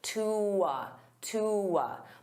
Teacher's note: instead of saying to a, I can combine those together with a w, to a. So I use that w to glide, to a.